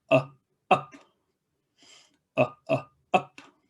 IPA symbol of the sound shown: ʌ